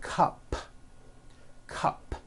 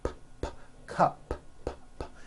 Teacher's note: it ends with an unvoiced P